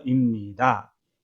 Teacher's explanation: 니가 비음이기 때문에 입이 임으로 바뀝니다. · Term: 비음화